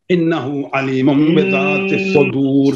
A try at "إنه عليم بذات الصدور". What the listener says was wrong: نون کا غنہ بھی کیجئے. علیم یہاں بھی غنہ ہے، با کے نیچے زیر کو صاف پڑھیے.